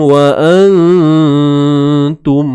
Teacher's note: Ikhfa hakiki, mesti kena dengung dua harakat kadarnya.